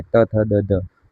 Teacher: आपकी जो टंग है त, थ, द, ध, ऊपर के जो दांत है और नीचे के दांत को थोड़ा स्लाइड टच करेगी, तब ये आप 5 जो कैरेक्टर है उनको आप बोल पाओगे। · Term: दंत्य